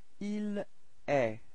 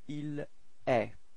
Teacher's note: So it's quite strange because it does sound the same as tu, okay, but then there is this final T, but you don't pronounce it.